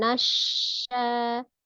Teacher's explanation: syin memiliki sifat tafasyi menyebar